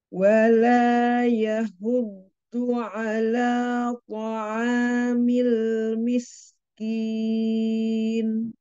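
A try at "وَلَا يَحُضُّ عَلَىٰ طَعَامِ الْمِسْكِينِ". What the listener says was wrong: Ya, ainnya perjelas lagi Ya, huddu huruf ha-nya juga diperjelas.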